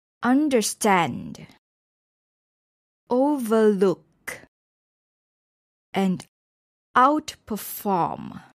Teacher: for compound verbs the stress is also on the last part of the word